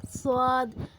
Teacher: جب زبان کی نوک ثنایا علیہ اور ثنایا سفلی کے درمیان آ جائے تو صاد ادا ہوتا ہے۔